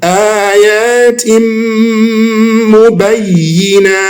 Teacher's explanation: Tanween. Ayatim is not tin anymore. It's not nun anymore. It's now what? Tim with mim.